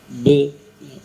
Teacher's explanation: be itu ya sukunya huruf b Ba Itu b bukan b kalau b itu terasa dia membentur macet dia maka harus di pantulkan pantulkan ibarat kita melempar Bora begitu plek langsung mantul